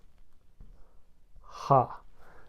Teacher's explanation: this sound is different than the English H. It's more of a guttural sound.